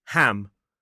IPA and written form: hæm (ham)